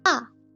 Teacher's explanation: And fourth tone, you can tell from here, it looks you are angry. Your tone goes downwards